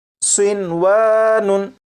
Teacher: होना तो ये चाहिए था कि नून साकिन को वाव में इदगाम करते, लेकिन नून साकिन और वाव क्योंकि एक लफ्ज़ में इकट्ठे हैं इसलिए यहाँ पर इदगाम नहीं करेंगे और इसे पढ़ेंगे सिनवानुन।